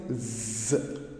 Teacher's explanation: It is a voiced alveolar sound.